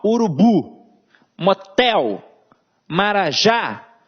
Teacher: Então aqui, ó, oxítona. A gente tem a última sílaba como tônica.